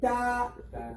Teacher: This letter comes from the tip of the tongue, like ta. Tip of the tongue.